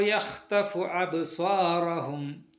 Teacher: ഇവിടെ റ, ഖാഫ്, ഹ, ത്വ, സ്വാദ് എന്നിവ തഫ്ഹീം ചെയ്യണം. ബ എന്ന അക്ഷരം വാക്കിൻ്റെ ഇടയിൽ സുക്കൂനായി വരുമ്പോൾ ശബ്ദത്തിൽ നേരിയ ഒരു തട്ടൽ മാത്രം മതി